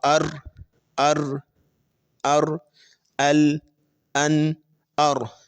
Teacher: زبان کا کنارہ پلس اوپر کے دانتوں کے مسوڑوں سے لگے تو اس سے جو ہے وہ لام، نون، را 3 حرف جو ہے وہ ادا ہوتے ہیں